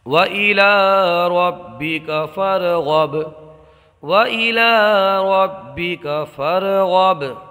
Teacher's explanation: یہ جو با ہے اس لیے کہ جب حروف قلقلہ مشدد ہوں تو انہیں جماؤ کے ساتھ ادا کیا جاتا ہے۔ یہاں را کو پر پڑھیں گے اور با کو قلقلے کے ساتھ پڑھیں گے، قلقلہ کر کے پڑھیں گے۔